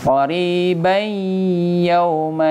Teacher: tanwin bertemu dengan ya idgham bi gunnah ya, bacaan dengan dengung, temponya minimal 2 harakat